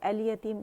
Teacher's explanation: لام قمریہ ہے اور لام ظاہر ہو رہی ہے، کیونکہ یا قمری لیٹر اپنے سے پہلے سے لام تعریف کو ظاہر کر دیا ہے، ٹھیک ہے۔